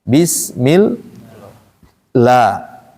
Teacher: Lafaz Allah ini ee terbagi menjadi dua cara bacanya tergantung harakat sebelumnya. Kalau harakat sebelumnya kasrah, maka lam pada lafaz Allah dibaca tipis. Tipis itu bunyinya a.